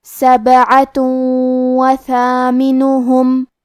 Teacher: واو حروف الادغام بغنہ میں سے ہے تو ہم یہ تنوین کو واو میں ملا کے غنہ اور تشدید کے ساتھ یہ حکم کو ادا کریں گے